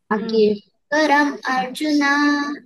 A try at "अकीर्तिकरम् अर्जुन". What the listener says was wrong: Arjuna, don't say separate. Akirtikaram Arjuna.